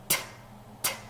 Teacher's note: 성대가 울리지 않는 세는 소리예요.